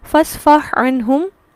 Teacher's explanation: ہا اور عین مخرج ایک ہے وسط حلق، صفات مختلف ہیں، پہلا ساکن دوسرا متحرک، تمام شرائط پوری ہونے کے باوجود یہاں ادغام نہیں ہوتا